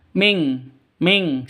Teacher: Cara bacanya samar didengungkan siap-siap ke huruf kafnya. Non matinya ditambah dengan ng makanya bacanya ming ya dengung ming ming seperti itu ya.